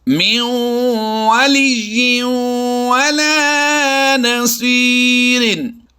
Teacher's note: इदगाम माल गुन्ना करते हुए दोनों में गुन्ना करके पढ़ेंगे।